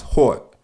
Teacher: The letter O becomes an AU, but much sharper than that of New Yorkers.